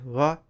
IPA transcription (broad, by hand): ʋ